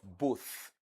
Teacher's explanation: The one you have at the end of both is a dental sound. That is voiceless dental sound.